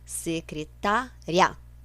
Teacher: Esse riá é junto, ou seja, é um ditongo.